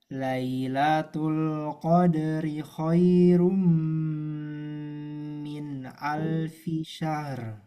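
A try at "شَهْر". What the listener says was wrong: Min alfi syahru. Nunnya jangan sampai kelamaan. Min al, min al. Ya, terus tambah ketebalan ro. Syahru, syahru.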